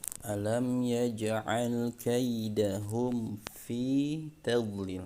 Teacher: huruf ain jangan sampai berubah menjadi hamzah ya, jadi harus dibaca dengan suara ain, yaitu makhrajnya dari tengah tenggorokan.